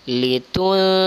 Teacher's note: nun sukun bertemu dengan Zal maka dia samar dan dengung